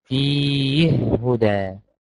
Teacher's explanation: يسكن الهاء، يقولها كده فيه، فالهاء لما تيجي بعدها حرف الهاء التانية يبقى فيها إدغام، يقولها كده فيه هدى، يقولها كده فيه هدى بالإدغام الكبير.